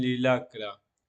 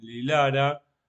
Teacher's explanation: Porque si se pronunciara la K sería en Lilacra, pero es usar en Lilara, por lo tanto después, cuando se coloca la consonante después del genitivo, la K desaparece